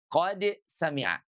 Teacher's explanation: Qod itu dia huruf dal ujung lidah dengan gusi. · Jadi qad sami'a dibacanya jelas qad sami'a. Dia idhar, bukannya idgham, tidak qas sami'a.